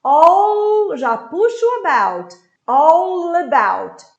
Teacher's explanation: I have this L, that is a dark L. Ele acaba lá atrás.